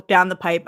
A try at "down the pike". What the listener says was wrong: Pike, not pipe. Pike. No, pike. Pike. Pike. Not pipe.